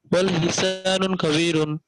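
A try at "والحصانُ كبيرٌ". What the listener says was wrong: ওয়াল হিসানু না, ওয়াল হিসান, ওয়াল হিসানুন না, ওয়াল হিসান, যখন কোন আরবিকে যখন কোন ওয়াল হিসানু বলেন। কবিরুন, ওয়াল হিসানু কাবীরুন। ইয়া, তাহলে আলিফ লাম থাকলে তানমিন বলা যাবে না।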